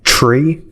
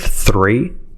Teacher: We say tree instead of three, typically.